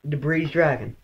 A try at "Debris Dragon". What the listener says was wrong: Debris. There is no S. The S is silent.